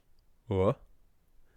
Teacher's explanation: if we can just say the sound w without rounding the lips, so w, that leaves us with velarization, or what basically is added to every broad consonant sound in Irish to make it broad.